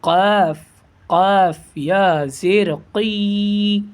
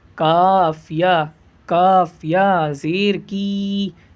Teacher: یہ بڑا قاف جس کو بولتے ہیں، اس زبان کی جڑ سے ادا ہوگا